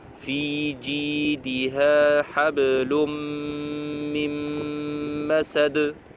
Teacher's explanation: Le noun ne se prononce même pas en fait. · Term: double idgham